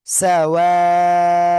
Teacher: এই যে 4 আলিফ মাদের চিহ্ন, আমরা 4 আলিফ টেনে পড়বো।